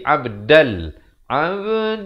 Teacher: Abdal, di sini tanwin bertemu lam, idgham bila gunnah. Masuk tanpa dengung. Asalnya abdan, dia jadi abdal.